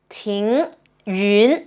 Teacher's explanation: ting, the rising tone, ting yun, the rising tone as well